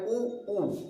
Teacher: जब हम ऊ बोलते हैं तो हमारा जो होठ है, होठों पे मूवमेंट आता है ना, होठ हमारा गोल हो जा रहा है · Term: ओष्ठ